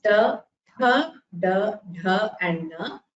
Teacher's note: Their origin is from the hard palate. The tongue rolls back and touches the hard palate to produce these sounds. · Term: Mudhanya Varnas